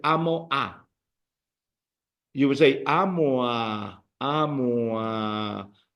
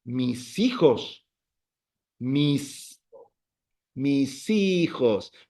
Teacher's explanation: we would link vowel and vowel.